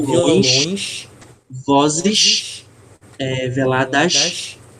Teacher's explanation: Então a gente tem, por exemplo, violões, vozes, veladas. Então a gente puxa um pouco mais a extensão quando a gente pronuncia o S no final das palavras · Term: sibilantes